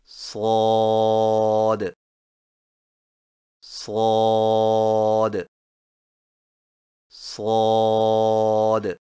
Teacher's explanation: صاد کی ادائیگی میں زبان کی نوک کو سامنے والے نیچے کے دو دانتوں کے کناروں سے مضبوطی سے لگا کر اور زبان کے پچھلے حصے کو تالو کی طرف بلند کرتے ہوئے موٹی اور سیٹی جیسی آواز میں پڑھیں، یعنی صاد صاد صاد.